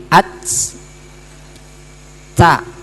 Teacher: Ada napas berhembus. Tapi tidak banyak, kecuali sukun baru banyak. Ats. Nah, itu baru banyak. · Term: hamas